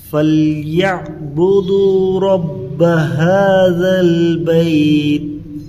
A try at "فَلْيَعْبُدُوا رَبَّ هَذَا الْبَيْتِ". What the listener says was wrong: تو کھینچنا نہیں ہے، بیت،